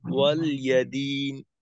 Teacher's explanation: লামের জেরের জায়গায় অনেকটা জজমমুখী উচ্চারণ হয়ে যায়, আর ইয়া এর উচ্চারণটা ক্লিয়ার থাকে না।